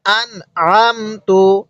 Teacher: ওই নুন সাকিনটা আমরা স্পষ্ট করে পড়বো